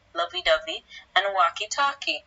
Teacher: a partial reduplication in which there's a change in the onset consonants while the remainder of the base remains the same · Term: initial sound change